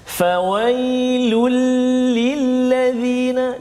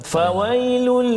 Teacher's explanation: Jadi kena jelaskan bunyi tanwin itu masuk dalam lam. Jadi seolah-olah macam hilang satu baris, seolah-olah lah contoh. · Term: idgham bila gunnah